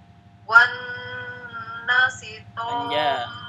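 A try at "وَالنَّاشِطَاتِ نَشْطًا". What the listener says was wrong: Panjang. Ada alif kecil. Kepanjangan 2 rakaat. Gunnah nunnya kurang, tambah. Wan nasyitati nashta.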